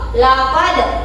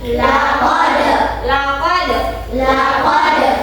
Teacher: Tapi karenanya ada huruf qalqalah berupa huruf da, maka dibaca dipantulkan